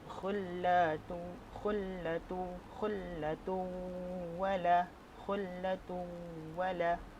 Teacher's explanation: idgham ma'al ghunnah, memasukkan bacaan terus masuk ke dalam waw dengan adanya dengung